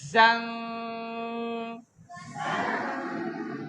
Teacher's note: زا کی آواز میں سیٹی ہے